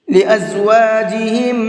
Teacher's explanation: جب بھی کبھی دو میم ایک ساتھ آتے ہیں، اکٹھے آتے ہیں، تو پہلے والے میم کو دوسرے والے میم کے اندر مکس کر دیتے ہیں اور پھر ساتھ میں غنہ کر کے پڑھتے ہیں۔ لازواجہم، اس طرح سے۔